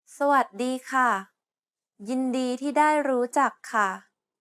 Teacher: The first syllable is a low tone, the third syllable is a mid-tone, the fourth syllable is a high tone, and the seventh tone is a falling tone.